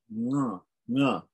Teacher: Na is a nasal. It's a guttural nasal.